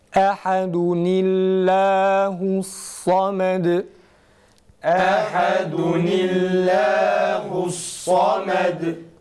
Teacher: Ve nuna kesre verdiğimizden dolayı da Allah lafzını kalın değil ince okuyoruz.